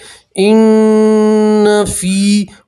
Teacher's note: نون کی آواز کو آپ 2 سیکنڈ کے لیے ناک میں روکے رکھیں گے تو اس سے گننا ادا ہوگا، ٹھیک ہے.